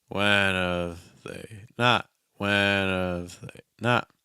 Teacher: See the pitch movement on they because it's your unstressed word right before your stressed word.